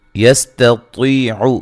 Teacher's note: تا کو باریک پڑھیں گے، طا کو دوسرے طا کو موٹا ادا کریں گے. طی یا مدہ ہے.